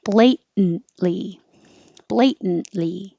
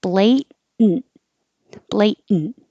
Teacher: The N becomes its own syllable. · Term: syllabic in